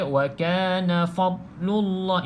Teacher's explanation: Jadi seringkali berlaku kesilapan fa ditebalkan.